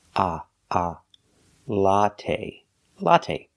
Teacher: it's the short o sound like hot and stop it's a short open Sound a a latte latte put the stress on the first syllable